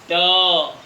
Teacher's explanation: ट जीभ जो है सीधे ऊपर जाती है और इस तरह से एक झटका मार के नीचे आती है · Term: मूर्धन्य